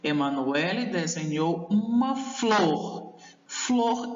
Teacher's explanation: mais intensidade do que a palavra uma emanuelle desenhou uma flor flor eu pronuncio de uma forma mais intensa por isso a palavra flor é considerado a monossílaba tônica